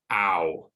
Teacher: it starts at the bottom and it moves to the top of the mouth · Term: diphthongs